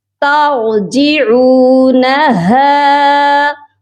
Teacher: را کو موٹا کر کے پڑھا جائے گا اور ہا کی آواز سینے سے آئے گی